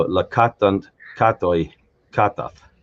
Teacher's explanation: It separates the word stem from the word ending, and the last syllable in the word stem is emphasized, and the word ending is de-emphasized by default